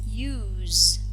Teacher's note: this verb ends in a voiced alveolar fricative sound, z.